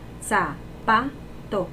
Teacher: ¿Cuál es la sílaba tónica? Pa. Porque nosotros decimos zapato.